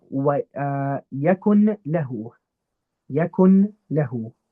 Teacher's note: we don't engage the nose because obviously without ghunna, and we don't engage the tongue because it's idgham. So really the whole thing is just skipped over completely. · we skip the noon completely. We just go straight for the lam or the ra. To put it in a diagram, we don't engage the nose because obviously without ghunna, and we don't engage the tongue because it's idgham. · I'm not applying ghunna because it has a lam after it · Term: idgham without ghunna